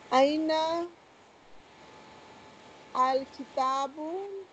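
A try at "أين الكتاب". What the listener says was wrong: Join lam with noon. Ainal.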